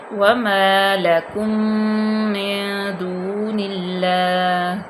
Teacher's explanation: میم ساکن کے بعد میم آ گیا تو یہاں پہ ادغام شفوی ہوگا، میم کا میم میں ادغام ہو جائے گا، یہاں پہ غنہ پیدا ہوگا۔ نون ساکن کے بعد دال آ گیا حروف احفا میں سے، تو یہاں پہ احفا کا قانون لاگو ہوگا، واو مدہ ہوگی، دون اللہ۔